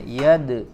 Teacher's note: huruf Dal termasuk huruf yang memiliki sifat Qalqalah ya maka dipantulkan huruf dalnya